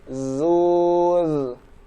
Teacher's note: Setelah kita mengucapkan dhammahnya, maka kita kembali ke rahang tipis dengan memposisikan rahang atau memposisikan lidah di ujung gigi seri atas.